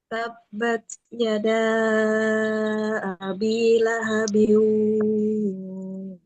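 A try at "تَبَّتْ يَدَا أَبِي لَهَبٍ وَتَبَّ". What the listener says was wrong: Oke, ujungnya hilang. Atau hilang suaranya.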